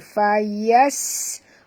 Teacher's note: bunyikan safir pada huruf sin. Fayasqi tebal dengan baca fayasqi ya.